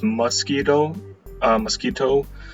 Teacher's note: So this O for me is a schwa, so I put an A with the grave or a U with the grave because both of them will make a schwa.